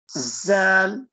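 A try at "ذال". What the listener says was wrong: No, not Zal. Are you able to tell the difference though? Are you able to tell the difference? If I said the and za, can you tell the difference?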